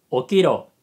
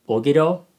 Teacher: so ki becomes kind of like voiced